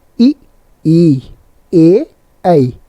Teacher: जिन स्वरों के उच्चारण में जिह्वा का अग्रभाग ऊपर उठता है, अग्र स्वर कहलाते हैं।